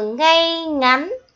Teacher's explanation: tiếng ngay có vần ay, có âm y dài ở cuối. Khi đọc, các con nhớ đọc mạnh để đọc cho chính xác nhé.